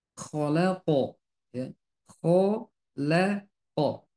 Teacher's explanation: Khosyian itu terpisah ya. Jadi ko dia tebal, la dia tipis, ko dia tebal.